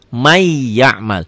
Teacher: Ditulisnya man ya'mal, dibacanya jadi may, jadi double y ya. N-nya hilang. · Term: idgham bigunnah